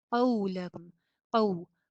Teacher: قاف موٹا اور واو پہ ہونٹ گول.